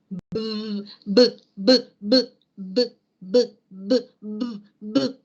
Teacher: vibración de las cuerdas vocales, sonidos sonoros.